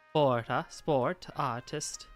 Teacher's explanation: the voiceless T becomes thicker by moving to the position of R